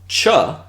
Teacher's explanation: This cha, so this is an affricate, it's a voiceless affricate, is actually the palatalization of a T